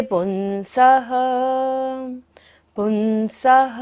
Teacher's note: पुंसः स के ऊपर विसर्ग है, सारी सांस का विसर्जन करेंगे